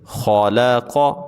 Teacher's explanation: مراج، وقف کریں گے، مراج، خا زبر خا، لام زبر لا، خا لا، قاف زبر قا، خا لا قا۔ خا کو بھی موٹا پڑھنا ہے اور قاف کو بھی موٹا پڑھنا ہے۔